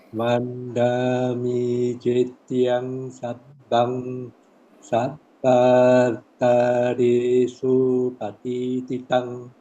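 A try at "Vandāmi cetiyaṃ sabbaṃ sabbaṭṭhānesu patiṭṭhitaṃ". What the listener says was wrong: You see, when we don't join, we tend to drag. Just now, you said Vandami, then Sabba. No. So to make sure we don't drag, we go Vandami che tiang sabbang. Vandami che tiang sabbang. Sabbatane supatit titang.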